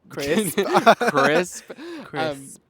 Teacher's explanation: crisp starts with a k, which is a velar plosive sound right in the back of your throat